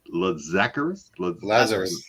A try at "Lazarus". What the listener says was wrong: On the wrong syllable.